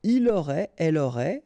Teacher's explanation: final T not pronounced, so phonetically exactly the same form